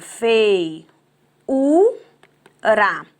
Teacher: Nós temos aqui uma palavra paroxítona, o u que é o tônico.